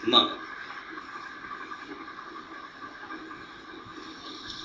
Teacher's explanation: when it comes to m then a part of it rings through the nostril and comes out through the nostril and gives this this special sound M.